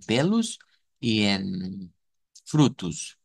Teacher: al final de las palabras en portugués la o se vuelve u